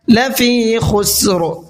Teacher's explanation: قرآن کریم کیونکہ عربی میں ہے، اردو میں نہیں ہے، تو اگر ہم کھا پڑھیں گے خسر تو یہ اردو کا ورڈ ہو جائے گا، عربی کا نہیں ہوگا، تو اس لیے آپ کو خا کو نکالنا ہے اور حلق سے نکال کر کے پڑھنا ہے